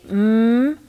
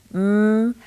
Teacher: the air goes through our noses when we say them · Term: nasal sounds